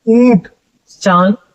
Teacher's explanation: अनुनासिक के उच्चारण में मुंह से अधिक एवं नाक से बहुत कम हवा या सांस या प्राण वायु निकलती है। ध्यान रखना मुंह से अधिक श्वास निकलेगी और आपके नाक से बहुत ही कम निकलेगी।